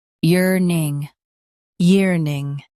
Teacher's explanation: year ning yearning year ning yearning Stress year and soften ning.